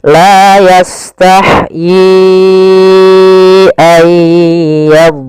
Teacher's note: yaitu adanya awalnya yi 2 harokat bertemu hamzah, maka menjadi 4 harokat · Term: mad jaiz munfasil